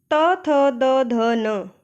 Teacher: त वर्ग का उच्चारण स्थान दांत है, इसलिए इनको दंत्य व्यंजन कहा जाता है।